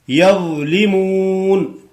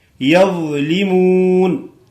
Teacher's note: یظلمون داسې بناوه یظلمون، زا بناوه ضا موټی، یظلمون دا مخامخ غاخو په سرو باندې د جبې سر ولګوه، ضا ادا کیږي، ضا ثا ذال دا دغه درې ټکي په دې ځای نه ادا کیږي.